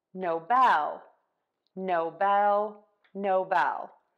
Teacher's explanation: we are going to switch the stress to syllable two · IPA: /noʊˈbɛl/